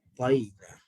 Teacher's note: bunyi ain sebenarnya adalah bunyi hamzah yang disempitkan laluan dia. Okay, sebab tu kita kata seolah-olah macam pangkal lidah tolak anak tekak ke belakang.